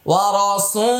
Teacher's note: এবার আসুন বলেন, রয়ের উপরে জবর হলে রয়ের উচ্চারণ সবসময় মোটা।